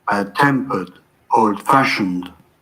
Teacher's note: these are compound adjectives. When I'm talking about the quality of a person, the stress is on the second part.